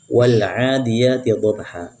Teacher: ada huruf ain yang dibaca 2 harakat, demikian juga huruf ya dibaca 2 harakat, dihukumkan sebagai mad tabi'i ya, dibaca 2 harakat.